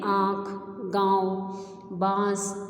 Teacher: यह आपके कंठ यानी गले और नासिका यानी कि नाक से निकलता है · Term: अनुनासिक